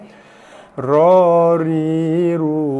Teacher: hujung lidah bertemu gusi atas ataupun menekan kawasan, menyentuh kawasan lelangit depan